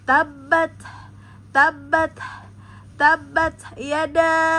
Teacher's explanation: Kemudian ta sukun ada sifat pada ta masuk ke hames ya. Maka keluarkan nafas atau keluar udara pada saat mengucapkan ta yang bersukun. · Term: hamas